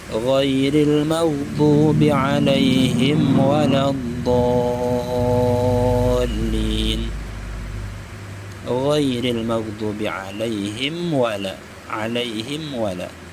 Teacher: Mim mati bertemu waw, maka hukumnya izhar syafawi. Bacaannya jelas mimnya.